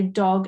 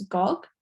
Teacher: replaced her D sound with a G sound, so she might say dog as gog